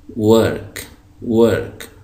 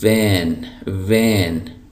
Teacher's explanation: जब हम अंग्रेज़ी में वी पढ़ते हैं तो इसको पढ़ने का तरीका ये है कि आपके ऊपर वाले दांत जो हैं वो नीचे वाले होंठ से टकराएंगे। जिस तरह हम फ़ा पढ़ते हैं उर्दू में, फ़ा, एफ़, तो बिल्कुल इसी तरीके से आप पढ़ेंगे इसको, लेकिन आवाज़ वाव की आनी चाहिए, आवाज़ फ़ा की नहीं आनी चाहिए।